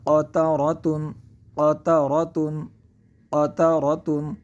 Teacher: قاف زبر ق، قاف زبر ق تا زبر تا، تا زبر تا قط قط را زبر را، را زبر را قطر قطر قطر قطر قطر قطر تا دو پیشتن تا دو پیشتن قطرتن قطرات قطرتن قطرات قطرتن۔ قطرات یہاں پہ ہم قاف کو پر پڑھیں گے کیونکہ قاف حروف مستعلیہ میں سے ہے، اور را کو پر پڑھیں گے کیونکہ را پر زبر زبر ہے، تو یہ لفظ مکمل ہوگا، تو یہ بنے گا قطرتن قطرتن قطرتن۔